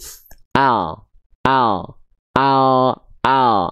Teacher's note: apabila teman-teman melafalkan huruf L pada abjad alfabet hanya menyentuhkan bagian ujung akhir lidahnya doang, betul-betul ujung lidahnya saja di sini, yang ininya doang.